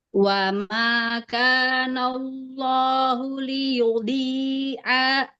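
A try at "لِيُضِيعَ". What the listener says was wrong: Ainnya nggak boleh panjang ya. Ainnya jangan jadi dijeda ya. Wa ma kana Allahu liyudhi'a imanakum liyudhi'a imanakum.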